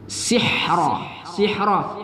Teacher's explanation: Ha juga termasuk huruf ham jadi ketika melafaz nya ada angin berhembus ya sihro sihro kemuda ro kita baca tafkim tebal pada ro